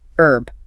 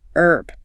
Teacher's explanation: American English usually drops the H.